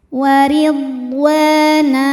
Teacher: Huruf ra dibunyikan secara tarqiq karena ra-nya ini berbaris kasrah, maka dibacanya tipis. Warid wa mad tabi'i dhahiri karena ada alif didahului fathah, maka panjang huruf wawnya 2 harokat. Waridwana. Nah, jika berhenti hukumnya mad iwad karena ada baris tanwin fathah yang kita wakafkan.